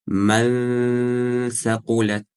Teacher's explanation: То есть кончик языка уходит между 2 резцов. И при удлинении нун язык у нас должен автоматически перейти к махраджу буквы са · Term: удлинение нун